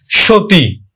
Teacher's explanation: সতী, আমরা দন্ত স উচ্চারণ করি না, তালব্য স উচ্চারণ করি, সো দীর্ঘইকার উচ্চারণ করি না, রস্বইকার উচ্চারণ করি, সতী।